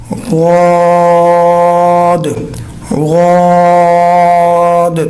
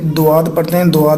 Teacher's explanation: اس کا اصل مخرج جو ہے وہ زبان کی کروٹ جو ہے وہ داڑھوں کے ساتھ اذراز کے ساتھ لگانی ہے